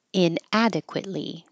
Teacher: the tongue goes to the T position adequate and then hold it there for the Lee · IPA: æ